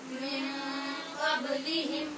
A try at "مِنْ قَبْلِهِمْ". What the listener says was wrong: قبلی نہیں، من قبلہم من قبلہم.